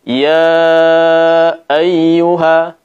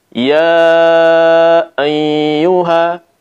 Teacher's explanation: membaca huruf ya ini dalam keadaan bertasdid, kemudian disertai dengan gunnah, ya, dengung dari rongga hidung